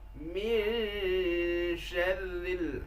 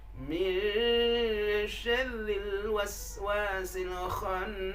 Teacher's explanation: Nun sukun disembunyikan di huruf shin. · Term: ikhfa hakiki